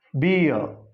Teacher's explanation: This final R is to be silent. So this is to be pronounced beer.